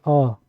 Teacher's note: अ तो जीभ क्या हो रही है बीच का भाग उसमें काम कर रहा है